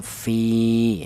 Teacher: Di mana ya mati ini dial huruf yang berharakat kasrah ini dibaca maudobi'i ya. Ini dipanjangkan dua ketukan